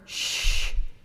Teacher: no vocal fold movement at all for the sh sound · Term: unvoiced sound